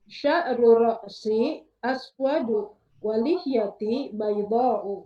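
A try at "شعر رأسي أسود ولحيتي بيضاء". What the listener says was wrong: Jamil.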